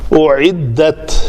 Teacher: او حمزہ کے اوپر پیش ہے تو شفتین گول ہوں گے